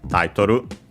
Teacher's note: should be accented on the first syllable, yes, as expected, on the ta